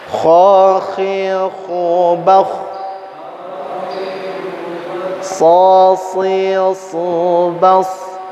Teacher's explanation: huruf-huruf ini semua hamas, yaitu artinya adalah ketika diucapkan maka dimatikan huruf atau hidup hurufnya, mengeluarkan nafas